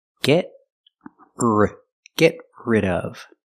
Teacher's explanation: Link the stop T to the R.